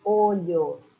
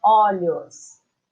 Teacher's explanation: No plural é aberto